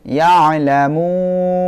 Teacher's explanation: এখানে যদি আমরা থামি তাহলে আমাদের এখানে মধ্যে আরজি হবে, অর্থাৎ 3 আলিফ করিয়া টানতে হবে।